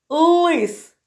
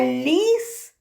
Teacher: Лис тверда, л, а ліс буде м'яка.